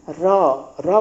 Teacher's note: र र बोलेंगे जीभ ऊपर टच कर रहा है ऊपरी जबड़ों में, यानी कि मूर्धा।